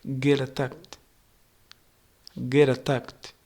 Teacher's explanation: The T in get flaps into a quick D, and attacked keeps the stress on tact.